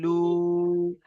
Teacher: লাম ওয়াও পেশ লু, এখানে ওয়াও মাদ্দার জন্য এক আলিফ পরিমাণ টান হচ্ছে